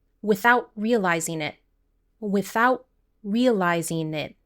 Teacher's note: We can connect these two sounds here, and we can pronounce these two words with a stopped T